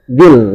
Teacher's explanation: dzi di situ ya, tidak dipanjangkan karena di depannya ada alif lam. Maka harus langsung dibaca digabung ya, dibacanya digabung.